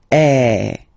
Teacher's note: the sound is really open, and normally your mouth should be opened a little bit more than with the accent aigu as well